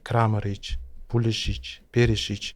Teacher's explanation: Qolgan 3 ta bo'g'inli Kramaric, Pulisic, Perisic urg'u birinchi bo'g'inga tushadi